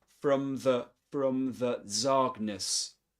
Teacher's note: From is pronounced with a schwa sound